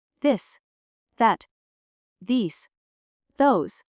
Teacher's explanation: Your tongue should go between your teeth and you blow air the. And for this, the sound is voiced, meaning your vocal cords vibrate.